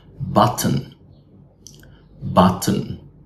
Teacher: syllabic means this nasal sound can cancel the schwa sound before it · the t may be fully replaced by a glottal stop before a syllabic nasal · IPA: /ʔ/